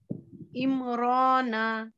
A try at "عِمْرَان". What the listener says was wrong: عین کی آواز نہیں آئی نا. عمران.